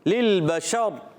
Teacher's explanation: للبشر میں پہلے لام کو دوسرے لام سے ملائیں گے، دوسرے لام کو ہلائیں گے نہیں. بشر، بشری لکھا ہوا ہے للبشری، مگر وقف کرنے میں ہو جائے گا را ساکن.